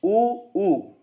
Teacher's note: इन को बोलोगे तो होंठ गोल हो रहे हैं